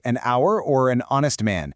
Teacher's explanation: The H is totally silent, so the very first sound your mouth makes is a vowel.